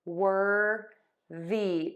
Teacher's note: The TH here is voiced. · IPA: /ˈwɜrði/